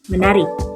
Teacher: bersenyawa dengan bunyi nasal yang homorgan dengan fonem T itu. Misalnya, me ditambah tari menjadi menari, pe ditambah tari menjadi penari.